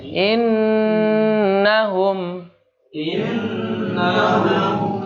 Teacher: Nun yang bertasydid dibaca dengung dengungnya masuk pada dengung yang paling sempurna